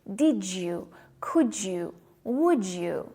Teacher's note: when D is followed by Y, we have a j sound